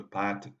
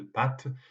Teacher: la disparition de la distinction entre les deux A, c'est-à-dire la longueur et la qualité des A